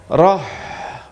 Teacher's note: Rokhawah ini cirinya mengalir. Mengalir ketika disukun dia akan tetap berbunyi sampai nanti nafasnya habis